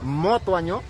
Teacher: Usted dijo mo, porque aquí se pronuncia mo. Nosotros decimos ma.